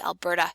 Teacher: Alberta, with that nice almost D sounding flap at the end, Alberta, as opposed to Albertan, where you just chop off the middle syllable and then have the n at the end, which conditions the occurrence of glottal stop.